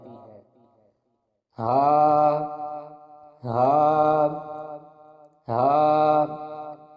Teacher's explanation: ہا کے مخرج کی ادائیگی حلق کے نیچے والے حصے سے ہوتی ہے